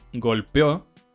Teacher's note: golpeo cuando hay una e y una dentro de la sílaba la primera se hace más corta bien corta y la segunda es la que se prolonga indefinidamente